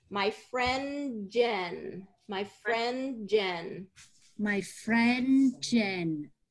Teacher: there's a little bit of a drop of that d sound because of the next word